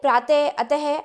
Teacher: विसर्ग, इसका उच्चारण आधे ह के समान होता है। इसका चिन्ह इस तरह से है, यानी इस तरह से दो बिंदियां लगाई जाती हैं, जैसे प्रातः, अतः आदि।